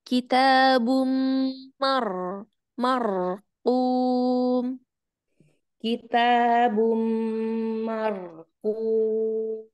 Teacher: huruf ro-nya terdengar sedikit agak cadel ya. Jadi kita mau takrirnya terdengar.